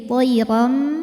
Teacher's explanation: adalah iqlab sebab ada harakat tanwin fathah yang menghadapi huruf ba maka bunyi tanwinnya diganti bunyi mim jadi thiriram disertai bunyi dengungan